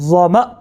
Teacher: ظو زبر ظو، میم زبر ما، ظوم، حمزہ دو پیش ان، ظوم ان، وقف ظوم، وقف ظوم، جھٹکا لگا، کیونکہ یہ آخر پہ حمزہ کو جھٹکے کے ساتھ پڑھا جاتا ہے